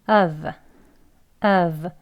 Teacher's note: 아예 앞에 h 바람 소리도 없는 그냥 슈아 소리 어와 V 끝나는 소리예요.